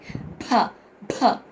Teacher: భ మహాప్రాణాక్షరం స్ట్రెస్ ఇచ్చి పలకాలి